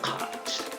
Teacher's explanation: La palabra cat, a diferencia de gato, que es una A abierta con una mezcla de A y E